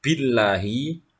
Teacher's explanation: lam jalalah dibaca tarqiq, ya, dengan alasan lafadz Allah didahului huruf yang berharokat kasroh, maka harus dibaca tarqiq atau tipis.